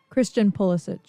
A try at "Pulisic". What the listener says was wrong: Pulisic. He's Pulisic. It's not Pew. Pulisic.